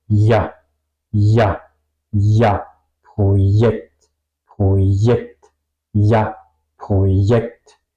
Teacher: Y tampoco abro la boca mucho. La J española sí, yo tengo que abrir la boca, pero la J alemana, la boca es más cerrada.